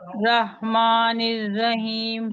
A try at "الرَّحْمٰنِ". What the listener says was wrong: ماں نہیں ہوگا. ماں.